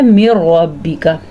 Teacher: ادغام تو ہوگا یعنی آپس میں ملائیں گے تو ضرور لیکن غنہ نہیں ہوگا